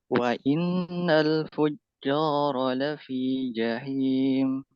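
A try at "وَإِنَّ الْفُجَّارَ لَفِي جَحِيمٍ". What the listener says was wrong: Jimnya jangan fujo. Itu nanti menebal. Fuja. Buka aja mulutnya. Fuja, bukan fujo. Jo begitu. Pangkal lidahnya diturunkan, jangan dinaikkan.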